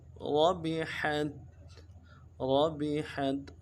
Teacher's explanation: را کو موٹا کریں گے اور ہا کو بھی گہرائی سے ادا کریں گے